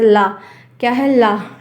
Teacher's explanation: बीच का मुंह का जो आकार है वो बंद हो जाएगा और साइड साइड से हवा निकलेगी।